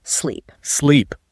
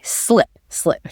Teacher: In sleep, that E sound is long, kind of stretched out. Sleep. Your mouth might widen a bit, but in slip, the E sound is much quicker, sharper, like you cut it short.